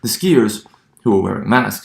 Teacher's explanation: in phonetics we note that there's a dip in intonations